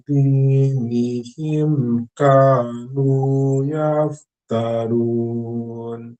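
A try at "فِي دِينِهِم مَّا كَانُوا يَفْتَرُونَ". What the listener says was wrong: Dinihim ma-nya belum, Mbak.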